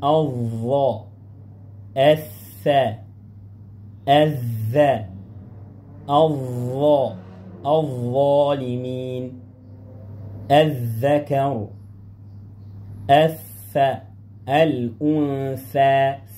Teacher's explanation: مخرج الظاء والذال والثاء من طرف اللسان مع اطراف الثنايا العليا